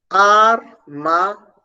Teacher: O som do e escondidinho ali o som do I. O I escondido ali após o som do E. Logo, a gente vai perceber que a gente tem um ditongo. · Então, a gente tem, na palavra armazém, um ditongo decrescente nasal. Não há dígrafo, mas há um ditongo.